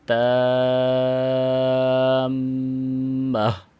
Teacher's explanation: اکثر احباب یہاں پہ یہ غلطی کرتے ہیں کہ تامہ، یعنی تا کو میم کے ساتھ ملاتے نہیں ہیں۔ · چونکہ میم مشدد ہے، آپ دیکھ سکتے ہیں، اور مشدد میم پہ غنہ بھی ہوتا ہے۔